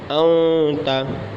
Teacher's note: आगे हमज़ा नून ज़बर अन ता ज़बर त अंता अंता नून साकिन है, इसके बाद ता हुरूफ़ इख्फ़ा में से, हुरूफ़ इख्फ़ा में सबसे पहले ता ही है। इख्फ़ा का कायदा होगा तो ज़ाहिर सी बात है नाक में आवाज़ ले जाएगी, गुन्ना करेंगे अंता।